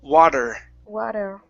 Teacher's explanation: that's going to be a flap T. You want to hit the top of your mouth very hard.